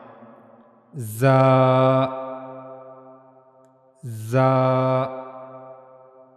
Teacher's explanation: while reading za, you have to make a whistle like sound, za, za. And you also have to read it in strong voice.